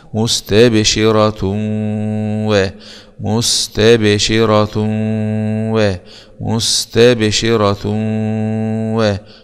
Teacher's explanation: تاء ضمتين مع الادغام بغنه في الواو المفتوح في حاله الوصل لان الو من حروف كلمه ينمو مستبشره و مستبشره و مستبشره